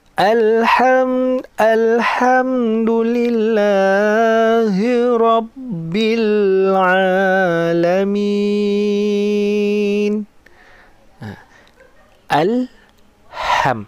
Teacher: Ham tu jangan terlalu lama, nanti dia jadi dengung.